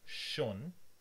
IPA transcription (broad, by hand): ʃon